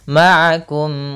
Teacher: suara mim itu hanya jelas saja, tidak boleh ditahan. Misalkan ma'akum, enggak, tapi langsung saja ma'akum wa la takunu. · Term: idhar syafawi